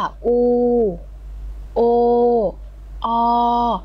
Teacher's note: สระอูจะอยู่ในลำคอส่วนข้างบนติดกับเพดานปากเนอะส่วนโอก็จะอยู่ตรงกลาง